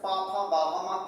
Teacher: और प वर्ग कहां से बोला जाता है? ओठ से बोला जाता है।